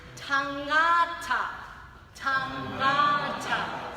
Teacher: So there's the NG sound at the back of the throat, like the word sing. At the end of the word sing, you have that NG sound.